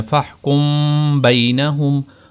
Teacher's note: یہاں پر میم کے بعد با ہے تو یہاں پر آپ نے اس کی آواز کو ناک میں لے جانا